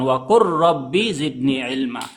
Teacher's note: Contoh yang ketiga, waqur rabbi, lam dan ro digabungkan jadi satu, lamnya dileburkan. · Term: idgam mutaqaribain, idgham mutaqaribain